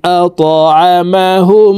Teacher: ত হরফকে উপরের দিকে ধাবিত করে ধাক্কা দিয়ে উচ্চারণ করব, কারণ ত কলকলার হরফ